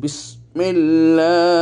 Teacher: থাকলে জবর থাকলে লাফেলা উচ্চারণের সময় মোটা ভাবে উচ্চারিত হবে কিন্তু লাফজে জালালার পূর্বে যদি জের থাকে এক অবস্থাতে লাফজে জালালা চিকন হবে